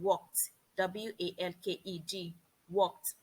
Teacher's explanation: The ED changes to T when it comes after a voiceless consonant sound.